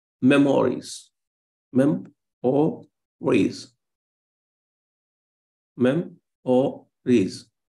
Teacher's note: In case of Dactyl, it is opposite to Anapest. There is stress on the first syllable, but not on the remaining two.